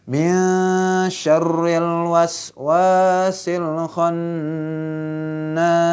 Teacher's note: Ikhfa samar tuh. Antara nun sama shin samar ikhfa. Ya. Ya, samar ikhfa.